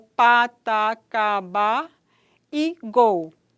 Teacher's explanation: Os articuladores produzem uma obstrução completa da passagem da corrente de ar através da boca. O véu palatino está levantado e o ar que vem dos pulmões encaminha-se para a cavidade oral. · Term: oclusiva